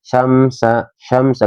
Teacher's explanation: Syamsau ada mim sukun bertemu dengan huruf sin ya, jadi dibacanya kita jelas ya. Syamsa, syamsa nggak boleh syam. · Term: idhar safawi